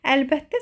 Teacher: Əlbəttə sözündə isə ikinci t, d kimi tələffüz olunur.